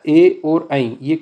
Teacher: ए और ऐ कंठ और तालु से निकलता है। ये कंठ है। कंठ के ऊपर जो है वो तालु है।